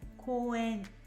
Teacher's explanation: it sounds like it takes the O and draws it out like Coen